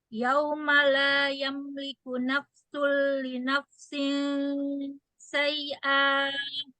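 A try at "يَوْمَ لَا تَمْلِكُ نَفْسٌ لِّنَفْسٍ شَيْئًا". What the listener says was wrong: Tamliku bukan yamliku. Tamliku. Tadi yamliku bahasanya.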